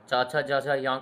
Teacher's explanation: च छ ज झ य का उच्चारण स्थान है तालु तालव्य